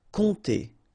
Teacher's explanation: OM, really like a nasal here. On, and then this P is not pronounced.